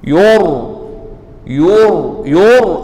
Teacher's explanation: Ra' ini tebal. Ra' mati sebelumnya huruf baris depan. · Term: ra' tebal